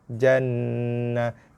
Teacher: Kemudian dengung wajibul gunnah, sabdu pada nun.